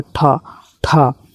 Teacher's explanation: ठ जो है यहां पर अघोष और महाप्राण है।